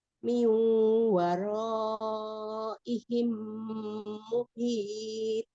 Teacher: Nun sukun ketemu dengan waw, langsung disambungkan, ditasdidkan ke huruf wawnya ya. Waro gitu. Min waraihim muhit.